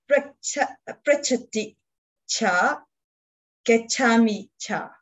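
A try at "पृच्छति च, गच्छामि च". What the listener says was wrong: Say that again with particular attention to the length of the vowels. The vowel of cha is short. For English speakers, to pronounce the monosyllable with the short final syllable is difficult. We tend to say cha, because it's a cha.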